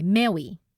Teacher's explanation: changing that R sound to a W sound